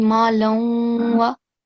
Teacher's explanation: we have to perform nasal sound as we connect the lam tanween with the waw mushaddad